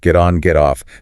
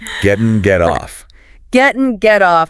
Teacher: That T in get often flaps before on or off.